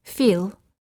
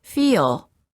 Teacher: When a long vowel is followed by an L, put an extra sound in between. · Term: Long vowels plus L